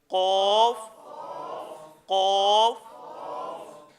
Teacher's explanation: زبان کی جڑ اور لحات کے مقابل تالو سے نکلتا ہے۔ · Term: موٹا قاف